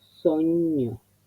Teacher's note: La S al principio de palabra es siempre la S nuestra, la normal, la que no tiene sonoridad.